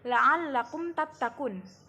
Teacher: Cara membaca idhar syafawi adalah mim mati dibaca secara jelas, tidak berdengung sedikit pun.